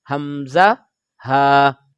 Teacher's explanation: حلق کے 3 حصے ہیں، ان میں سے جو حلق کا سینے کی طرف سے جو حصہ ہے وہاں سے ہم ان 2 حروف کو ادا کرتے ہیں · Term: حروف حلقیہ